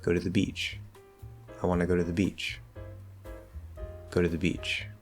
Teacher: now the focus we're going to fall all the way down the stresses are still there throughout the sentence but beach doesn't get that little bump up anymore